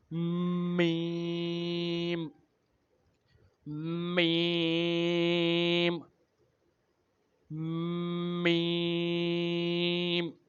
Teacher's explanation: میم بھی ہونٹوں سے ادا ہوتا ہے لیکن بند ہونٹوں کے خشک حصے سے، یعنی جب ہم اپنے ہونٹوں کو بند کرتے ہیں تو خشک حصہ یعنی جو ہمارا باہر والا حصہ ہوتا ہے، جو ہمارے ہونٹوں کا باہر والا حصہ ہوتا ہے وہاں سے یہ میم ادا ہوتا ہے، میم، میم، میم۔